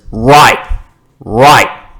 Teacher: fine hear the word right righ T pronounced as right right the T sound disappeared it's commonly said like that in Australia